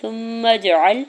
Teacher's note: سا کی پیش کو میم مشدد کے ساتھ ملاتے ہوئے غنہ کرنا ہے